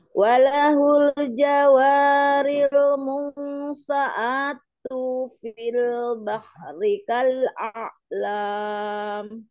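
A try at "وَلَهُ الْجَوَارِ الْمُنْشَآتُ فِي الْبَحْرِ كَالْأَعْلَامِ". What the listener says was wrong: Munsyaatu fil tuhnya pendek.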